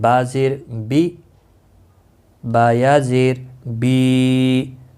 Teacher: یا مدہ بنتا ہے، ایک الف کے برابر کھینچ کر پڑھنا ہے۔